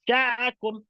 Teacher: Nun mati ketemu sya, lidahnya tidak nempel lidahnya. Dia tengahnya naik ke langit-langit. Syakum. Ada sofirnya dalam keadaan gigi yang tertutup.